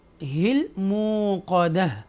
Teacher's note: رکنے کی صورت میں جو تا ہے اور پیش ہے وہ ریموو کر دی جائیں گی، اور ہا ساکنہ پیچھے رہ جائے گا